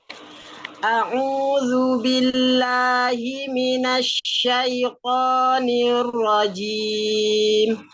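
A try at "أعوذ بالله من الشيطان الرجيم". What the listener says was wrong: Nah, jimnya jangan sampai ada desisnya. Jangan nirrojim gitu, tapi jim, tidak ada hamesnya ya.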